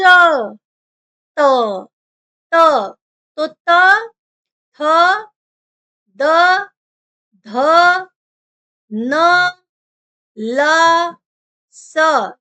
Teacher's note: यह सभी क्या हो जाएंगे ये सभी दंत वर्ण हो जाएंगे जिसमें आपका जीभ का जो आगे का भाग है वह आपके दांतों को टच करता है स्पर्श करता है